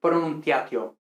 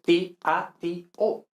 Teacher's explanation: son dos vocales que pertenecen a dos sílabas diferentes incluso si son diptongos en español